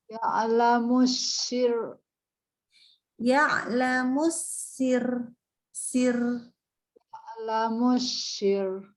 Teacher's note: kalau misalkan ro-nya waqaf berhenti, huruf sebelumnya kasroh, maka ro-nya dibaca tipis